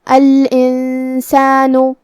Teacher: کلمت الانسان میں یہاں نون ساکن ہے، پھر حرف السین ہے، سین حروف الاخفاء میں سے ہے تو ہم یہ حکم کو غنہ کے ساتھ ادا کریں گے